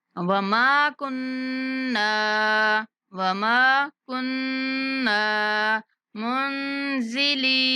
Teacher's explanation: میم کو بھی کھینچنا ہے اور نون پر غنہ کرتے ہوئے نون کو بھی کھینچ کے پڑھنا ہے